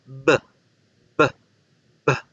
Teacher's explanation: La B bilabial se produce con ambos labios. Se genera una pequeña explosión porque el aire empuja los labios para poder salir.